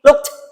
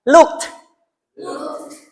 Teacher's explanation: letupannya keluarkan bukan ke dalam